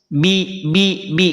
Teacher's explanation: karena tidak terangkat pangkal lidah kita ba termasuk huruf tipis